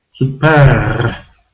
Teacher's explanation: they try to pronounce ER and they roll the R